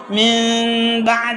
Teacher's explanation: من بعد بولے تو جب تک ہونٹ کھلے رہیں گے نون کا اخفا ہوگا، جب ملیں گے میم کا بھی کچھ حصہ ادا ہو جائے گا، میم ساکن بھی ادا ہو جائے گی، تو اس میں دو حروف نکلنے کے چانسز ہے، امکان ہے.